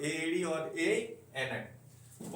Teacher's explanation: एड़ी एनक का उच्चारण हम कंठ और तालु से करते हैं, इसीलिए कंठ तालव्य कहते हैं इसे।